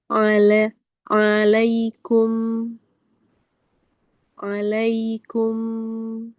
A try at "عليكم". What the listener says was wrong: Nah, betul yang kedua. Jadi jangan sampai menarik huruf sebelumnya, jadi nggak sempurna. Alaikum, sekali lagi.